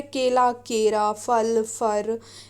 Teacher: इसमें ला के स्थान पर रा का प्रयोग होता है